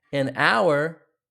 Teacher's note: An hour is a vowel sound, not a hour. You don't hear the h, you just hear the vowel o.